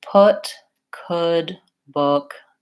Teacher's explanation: it's got some rounding but it's not as round as the ooh